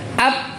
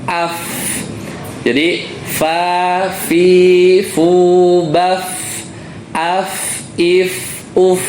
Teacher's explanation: makhrajnya Fa itu adalah gigi seri atas bertemu dengan bibir bawah yang mana bawahnya yang bagian yang basah Jadi kalau kita sukunkan bacanya mengalir AF jadi Fa fi fu